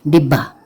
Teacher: تشدید یہ ظاہر کرتی ہے کہ ہم نے بے کے اوپر دباؤ ڈالنا ہے، یعنی بے کو زور سے بولنا ہے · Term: حرف مشدد